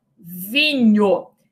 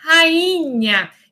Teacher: esse fonema grafado pelo NH é um fonema palatal